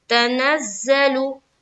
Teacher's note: लू लाम के ऊपर पेश की हरकत है, पेश को जल्दी पढ़े, थोड़ा भी ना खींचे, मारूफ पढ़े, मजहूल आवाज से बचे